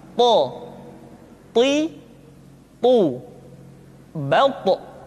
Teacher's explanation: Sehingga dengan dua sifat ini, maka ketika to diucapkan, suara kita terdengar menebal.